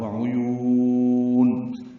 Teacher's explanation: واو ہونٹوں کی نہ تمام گلائی سے ادا ہوگی، عین وسط حلق سے، اور یا کو لمبا کریں گے